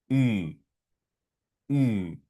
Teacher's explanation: poniendo nuestra boca en forma de U, solo la forma, y desde el interior de nuestro tracto vocal va a salir el sonido I, I, y sonaría así, forma de U, sonido de I, U, U. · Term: U umlaut